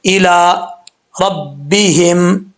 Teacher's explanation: لام کے اوپر کھڑا زبر ہے، 1 الف کی مقدار، اس کو لمبا کریں گے